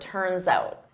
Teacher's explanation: I'm using that S to glide to the next word, but I say it as one word